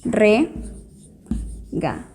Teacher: Lar es la sílaba tónica, por lo tanto es aguda.